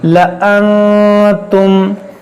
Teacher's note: نون ساکن کے بعد تا ہے، یہاں پر اخفا ہوگا، گنہ کریں گے